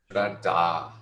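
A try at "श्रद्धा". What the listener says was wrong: Don't forget the double D and also the aspiration there.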